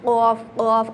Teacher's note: آپ نے اس پہ قلقلہ کرنا ہے، ایک گھنٹی کی آواز آتی ہے حلق سے